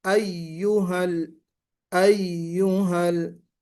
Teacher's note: या अय्युहल, अय्युहल, ये जो है शद्दा है या के ऊपर, या मुशद्दद है। इसको आप जरा अच्छे अंदाज में इस तरह पढ़ें कि दोनों या वाज़े हो जाएं।